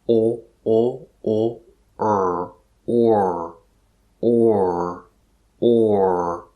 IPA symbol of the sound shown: ɔr